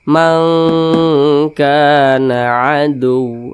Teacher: Karena dia ab'ad, jadi dengungnya itu dia lebih dominan, atau lebih tinggi ya. Jadinya lebih cenderung berbunyi eng.